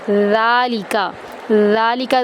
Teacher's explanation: ذال ہمیشہ باریک پڑھا جاتا ہے، موٹا نہیں کیا جاتا اور سختی نہیں دی جاتی، اس کو نرمی سے پڑھا جاتا ہے ، ذالکا، ذال کو ایک الف کے برابر لمبا کریں گے،